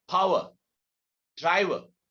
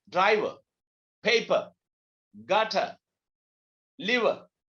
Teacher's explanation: And not sometimes, most of the time, when R comes in the end of a word, it's not pronounced.